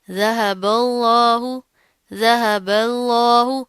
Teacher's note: ہم لفظ اللہ کو موٹا کر رہے ہیں لیکن پیچھے والا با باریک ہوگا